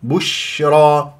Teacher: ولا تقدم الشفاه في الشين والشين تفشي صفه هامه في الشين ويجري فيها الصوت والنفس